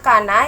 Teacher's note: Lalu ada kana yang dihukumi dengan mad tabi'i, dibaca panjang 2 harokat